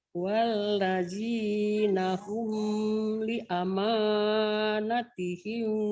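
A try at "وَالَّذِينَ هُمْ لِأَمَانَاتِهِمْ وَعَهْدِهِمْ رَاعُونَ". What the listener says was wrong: di amanah panjang juga Ibu.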